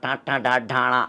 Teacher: నాలికను పైకి తన్నుతున్న ట ట డ డ అనే మూర్ధన్యాలు